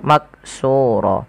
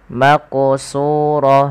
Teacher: ada kita namakan dengan bacaan Qalqalah Qalqalah artinya yaitu memantul sehingga huruf qaf ini wajib dipantulkan ketika dia berharakat sukun